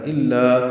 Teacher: الا لا الف مدہ ہے، 2 حرکات یہ بھی لمبا ہے